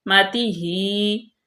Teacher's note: ہا کھڑی زیر ہے اس کے نیچے تو اس کو ہم لمبا کریں گے